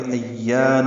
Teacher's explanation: ایان حمزہ کو یا سے ملانا ہے اور یا الف مدہ ہے